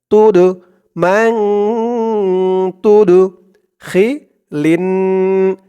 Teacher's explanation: দালটা হচ্ছে কলকলার হরফ ধাক্কা দিয়ে পড়তে হবে